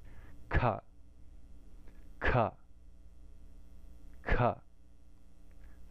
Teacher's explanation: In the guttural, it's just like ka, but we're going to put more air behind it. And you really want to make it feel like there's air coming out of your mouth when you say it.